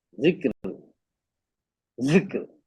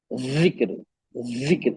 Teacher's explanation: जाल ऊपर के दांतों के किनारों से अदा होता है, और जा नीचे के दांतों के अंदरूनी किनारे से अदा होता है। दोनों को मखरज भी बिल्कुल बहुत ही अलग है, ऊपर नीचे है।